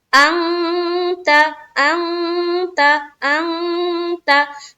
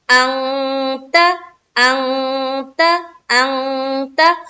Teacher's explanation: इख्फा कर रहे हैं, नाक में आवाज को छुपा रहे हैं। किस चीज की आवाज को, नून की आवाज को हम कहाँ छुपा रहे हैं, नाक में छुपा रहे हैं।